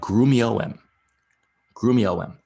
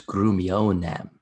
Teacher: the Roman speakers didn't like having a mouthful of vowels like that. And so they add an N.